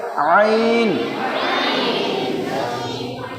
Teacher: গলার মাঝখান থেকে বলতে হবে আইন